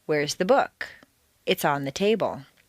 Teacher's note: The first is stressed on the most common everyday word, book. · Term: Normal intonation